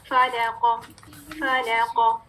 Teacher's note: فا بھی باریک, لام بھی باریک, قاف مفخم